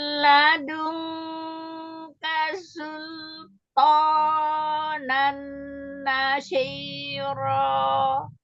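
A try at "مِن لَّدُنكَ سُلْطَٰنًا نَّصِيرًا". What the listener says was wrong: Shortnya memang belum dapat, ya masih ada shinnya masih keluar di tengah lidah itu.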